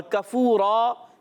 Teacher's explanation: کاف، زبان کی جڑ اور تالو کے سخت حصے سے